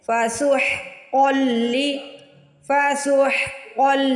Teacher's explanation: فسحقا قوف دو نقطوں والا ہے، قوف کو موٹا پڑھیں گے۔ سب سے پہلے حا کی آواز نکالیے حلق سے